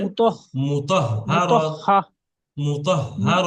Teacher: হাটা দুবার উচ্চারণ হবে